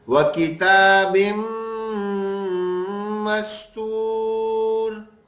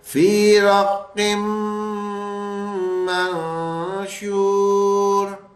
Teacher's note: تو پھر ملائیں گے اور ملاتے وقت نون کی آواز ہٹ جائے گی، غنّے کی آواز آ جائے گی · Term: ادغام کے غنّے